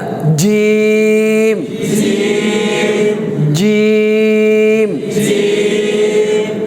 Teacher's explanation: জিমটা হচ্ছে একটু শক্ত হরফ, জিব্বার মধ্যখান উপরের তালুর সাথে লাগবে।